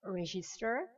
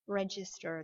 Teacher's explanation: imaginez qu'il y a un D avant le G